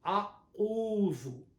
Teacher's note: our mouth should be rounded for ain, because on ain there is a dhamma